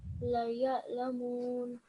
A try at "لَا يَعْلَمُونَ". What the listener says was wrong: Just make this a bit longer because this is alif madda. La ya'lamun.